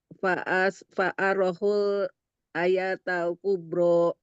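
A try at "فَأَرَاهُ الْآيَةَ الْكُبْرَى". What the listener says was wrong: A-nya jangan panjang. Pak Arohul gitu. A-nya jangan panjang. Fa'arohul. Fa'arohul ayat.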